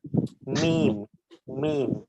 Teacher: একত্রে লাগাতে হচ্ছে আমাদের যে অংশগুলো বাইরে থাকে অর্থাৎ মিম মিম ঠোঁটের বাইরের অংশগুলোকে একত্রে লাগিয়ে মিম উচ্চারণ করতে হচ্ছে